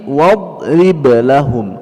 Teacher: huruf dad tidak diqalqalahkan karena dia tidak punya sifat qalqalah. Lahum mim mati berjumpa mim, ya, mim mati berjumpa mim, idgham mithlain juga sama atau idgham mimi juga sama, ditahan 2 harakat dengan dengung di dalam khayshum.